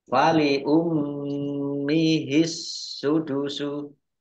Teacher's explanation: mim tasjid dibaca gunah atau mendengung ditahan dua harakat